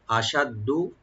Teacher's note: শিনের মাখরাজ হলো জিহ্বার মধ্যকান, তার উপর তালো